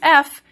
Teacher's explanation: A fricative, we just create friction as the air comes through our mouth. So what we think of as F is just creating a lot of friction.